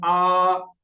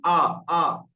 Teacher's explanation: আপনারা দেখবেন উপরে দাঁত নিচের ঠোঁটের ভিজে অংশগুলোই লাগছে, তাহলে একটা হাওয়াও বেরিয়ে যাচ্ছে, তবে উচ্চারণ হচ্ছে ফা। আর আলিফের উচ্চারণ তো পুরো মুখের খালি অংশ থেকে হয়, আ। গাল হা করলেই আলিফ বের হবে, আ।